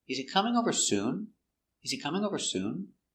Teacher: And we stress important words. Coming is the verb. We stress coming.